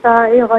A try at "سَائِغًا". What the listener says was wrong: سائغن میں سا پر یہ چونکہ مد ہے تو اس کو کھینچنا تھا.